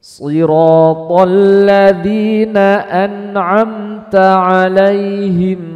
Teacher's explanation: ta tidak boleh keluar nafas, tidak boleh dibaca seperti ini, Mbak.